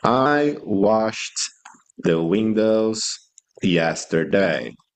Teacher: the ed sound here sounds like a t. It has a t sound.